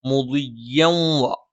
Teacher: മുദിയ്യൻ വ തൻവീന് ശേഷം വാ വന്നു, ഇദ്ഗാമും ബിഗുന്നയാണ്. അപ്പം തൻവീനിന് ശേഷമുള്ള വാവിലേക്ക് ചേർത്തോതും അതോടൊപ്പം മണിക്കുകയും കൂടി വേണം.